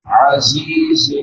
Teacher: عین ہے وسط حلق سے ادا ہوتی ہے. زا کے بعد یا مدہ ہے کلک برابر لمبا کریں گے.